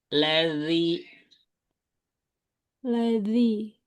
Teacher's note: ujung lidah ke ujung gigi ya